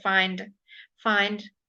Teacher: the d at the very end of the word is a little bit more like a t. It's softer.